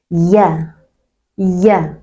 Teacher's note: Tengah lidah kita naikkan ke arah langit-langit walaupun tidak menyentuh seluruhnya ya.